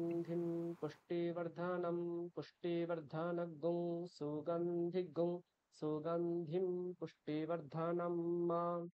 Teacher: যেখানে অনুস্বারের পরে সকার রয়েছে তার আগে অনুস্বারটাকে আমরা গুং বলে নিচ্ছি